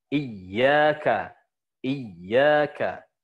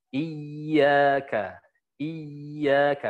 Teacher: ketika dia bertasydid, maka dia ada kaidah nabr di situ, nabroh. Nah, ditekan.